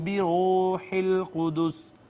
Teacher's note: را کو پر کر کے ہم نے پڑھا، مفخم ہوگی اس وجہ سے کہ مضموم ہے